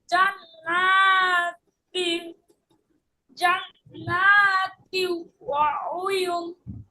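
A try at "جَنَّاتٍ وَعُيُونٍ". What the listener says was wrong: উয়ুন, টান হবে তো।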